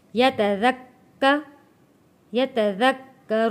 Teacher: کاف کے اوپر تشدید ہے، سختی کے ساتھ تھوڑا رک کر